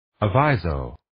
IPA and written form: ə'vaɪzoʊ (Aviso)